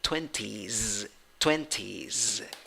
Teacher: even though the spelling finishes in s the pronunciation finishes in z